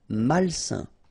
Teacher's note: A-I-N together, it's a nasal and it's un.